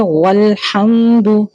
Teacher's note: ہا کو رگڑ کے ساتھ ادا کریں گے وسط حلق سے